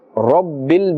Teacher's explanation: Rabbil, because Ra has a fatha and therefore must be pronounced with a thick tone or a full mouth